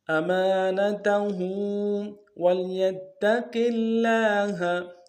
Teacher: أَمَانَتَهُ وَلْيَتَّقِ اللَّهَ، واو کو لام کے سامنے لانا ہے غنہ نہیں ہوگا، یا کو تا کے سامنے لائیں گے، تا کے اوپر تشدید زور دیں گے